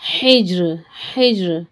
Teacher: जीम पर साकिन है, खलखला करेंगे।